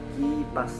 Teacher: bunyi yang dihasilkan ketika punggung lidah bersentuhan dengan langit-langit lunak